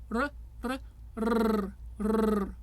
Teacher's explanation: Then we have the trill, where the tip of the tongue taps either the alveolar ridge or the teeth